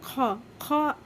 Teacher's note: हमारे हलक में जो है हल्की सी रगड़ महसूस होगी, वहाँ से खौ अदा होगा